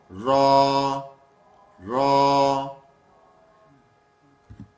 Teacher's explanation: زبان کی پشت یعنی زبان کا جو اوپری حصہ ہے اس کو کہاں ٹچ کرتے ہیں؟ تالو سے، اور موٹا کر دیتے ہیں